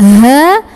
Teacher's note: tenggorokan paling bawah kita tapi tidak terlalu didorong dari dada